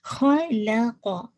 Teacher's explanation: خ ہیوی رکھیے گا، قاف ہیوی رکھیے گا، لام کو موٹا نہیں کیجیے گا